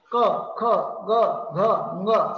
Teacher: त्या मृदू टाळूजवळ हवा येते आणि जिभेचा मागचा पार्ट वर उचलला जाऊन क, ख, ग, घ, ङ हे उच्चार होतात. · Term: मृदू तालव्य